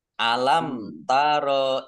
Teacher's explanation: mim sukun bertemu dengan huruf ta, bacaan idhar syafawi, dibaca jelas. Ilal ladzina, lamnya dibaca double, ada tasdidnya.